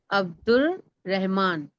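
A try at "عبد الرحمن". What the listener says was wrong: अब्दुर, अलिफ और लाम नहीं होगा, अब्दुर अलिफ लाम नहीं होगा। रहमान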